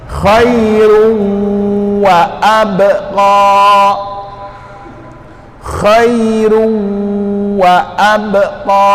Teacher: Ruwa, di huruf wawnya itu kita anggap dia ada tanda tasydid di situ. Jadi khairun, suara huruf n-nya dimasukkan ke dalam huruf sesudahnya. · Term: idgham